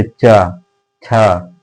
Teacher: जैसे ही आप चा बोलेंगे, ये जो आपकी जिह्वा है ना, वो जाकर आपके तालु, तालु पर होता है ना, उसमें जाकर टच होगी। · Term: तालु वर्ण